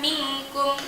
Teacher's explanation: nun mati bertemu dengan huruf kaf, maka dibaca juga ikhfa hakiki dan samar-samar